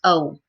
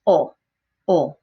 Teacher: Okay, now another thing I want to mention about these vowels is the mouth really never comes to a close. So when we say the letter A or O in English, it goes O. Our mouth practically closes. But in Spanish, it remains open. It's never going to be closed.